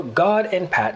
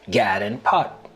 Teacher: the lot trap vowels are reverse for God and Pat to sound like Gad and pot